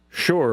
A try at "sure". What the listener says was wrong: Yeah, there's a U in there. Yeah, you need to pronounce it. You need to enunciate the U in sure. SHER. Sure. There's a U.